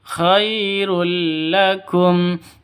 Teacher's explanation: tanwin bertemu dengan lam cara bacanya masuk ke lam tanpa dengung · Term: idgham bila